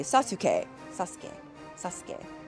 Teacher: So any oo sound in Japanese tend to be really soft. It's really almost whispered. I say it's actually like a hidden sound.